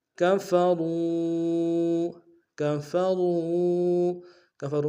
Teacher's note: میں را کو واو کو سامنے لائیں گے، واو مدہ ہے، را کو موٹا ادا کریں گے، ایک رفتار میں کھینچیں گے واو مدہ کو